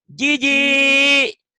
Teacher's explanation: yang kedua ji lagi, tapi panjang, ada pemanjang